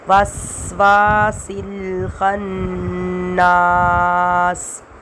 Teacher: سین میں سیٹی کی آواز آئے گی، پھر واؤ میں واؤ الف زبر وا، تو اس میں الف سے پہلے زبر آ رہا ہے تو اس الف کو ہم کھینچیں گے، وسواس الخناس۔